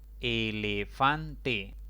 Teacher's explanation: elefante es otra palabra de cuatro sílabas recae la mayor intensidad de voz en la penúltima sílaba · Recae la mayor intensidad de voz en la penúltima sílaba contando de izquierda a derecha. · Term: grave, grave sin tilde